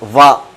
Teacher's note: దంతము ఓష్టము అంటే దంతాలు మరియు పెదవుల సహాయంతో పలిగేటువంటి ఏకైక అక్షరము వా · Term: దంతోష్టము